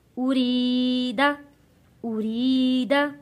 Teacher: یا ساکن سے پہلے زیر ہو حروف مدہ ہوتا ہے، ایک الف کے برابر یہاں ہم کھینچ کر پڑھیں گے۔ ارید، ارید را کو باریک پڑھیں گے کیونکہ زیر آ رہا ہے را کے نیچے۔